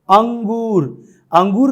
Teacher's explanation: नाक और मुंह दोनों से ही श्वास वायु हवा बाहर निकल रही है, अतः यह अनुनासिक है। जबकि चांद नौ नाक से जो उच्चारित हो रहा है नासिका से, अतः यह अनुस्वार है।